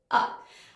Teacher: the most important thing is that the lips are slightly rounded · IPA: ʌ